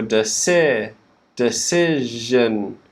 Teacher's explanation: in decision that second syllable the vowel sound is changing to si